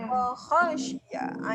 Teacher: Dekat sini kha jangan dinipiskan jadi wahasyiyah.